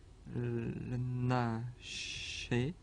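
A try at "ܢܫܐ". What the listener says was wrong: Nasha, Alors n'oubliez pas que Nasha, il prend les deux points du pluriel, mais il garde le A. Il ne devient pas E.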